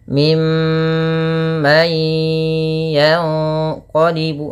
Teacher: Min mimma yaitu ada bacaan gunah. Cara membacanya suara mnya ditahan ya teman-teman. Jangan hanya lepas saja tapi tahan dulu dua harakat baru dilepas. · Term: gunnah